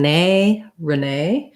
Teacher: nay is going to be stressed. And Americans will say that with the A diphthong. So it sounds kind of like Renee, short and then light, long.